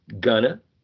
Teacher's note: the diphthong in here is replaced by a monophthong, right? And ing is completely elided, so there's an elision as well here.